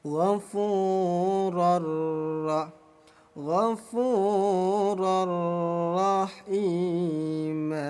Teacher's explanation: Idgham artinya memasukkan, bila gunnah artinya tanpa dengung. Jadi bunyi tanwin dimasukkan ke huruf ra, langsung tempelkan. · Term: idgham bila gunnah